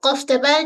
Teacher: Qaf tebal. Jangan baca taqa. Jangan berangin. Qa jahrun. Dia bersifat dengan ah tidak berangin.